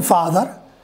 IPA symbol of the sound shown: f